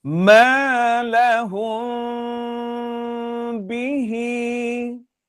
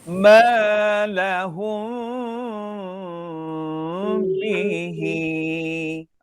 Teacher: bunyi dengung bibir tidak rapat dua harkat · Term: dengung ikhfa syafawi